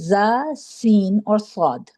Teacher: صاد میں بھی سیٹی کی آواز آتی ہے لیکن صاد موٹا حروف ہے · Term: حروف صفیر